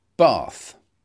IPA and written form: bɑːθ (bath)